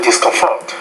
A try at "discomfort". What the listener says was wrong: I would say there, discomfort. You're putting the stress more on the final syllable in the word, but I would say discomfort.